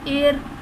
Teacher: را ساکن سے پہلے زیر ہوگا تو را کو باریک پڑھا جائے گا